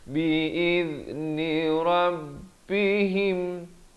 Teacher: Di sini dengungkan ilan nuri bi'idh. Zal di hujung lidah. Bi'idh, hujung lidah mesti keluar di antara 2 gigi.